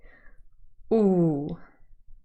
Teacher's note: a long rounded vowel sound so here i think you can actually really see the lips protruding